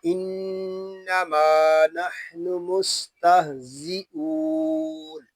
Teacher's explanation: اس میں سیٹی کی آواز آئے گی کیونکہ زا حروف صفیریہ میں سے ہے، اور حروف صفیریہ کو سیٹی کے ساتھ ادا کریں گے۔